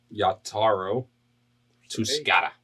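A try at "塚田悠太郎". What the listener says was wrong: Where's the first A? You said Yataro.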